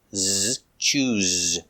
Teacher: use the zebra z sound with vibration